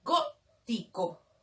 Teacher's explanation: Esdrújula en la antepenúltima sílaba.